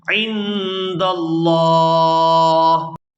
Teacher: یہاں پر بھی وقف کریں گے تو وقف کی صورت میں آخر سے ہا جو ہے یہ ساکن ہو جائے گی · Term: ہا ساکن